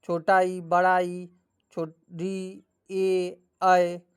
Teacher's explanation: इन स्वर्णों के उच्चारण में जीहा का अग्र भाग सक्रिय रहता है। अर्थात जीहा कुछ और आगे सड़क जाती है तथा जिहांग जीहा भाग थोड़ा सा उठता है। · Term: अग्र स्वर्ण